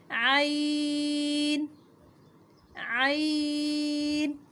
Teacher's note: عین حروف ہلکی میں سے ہے اور اسے حلق کے درمیان سے ادا کریں گے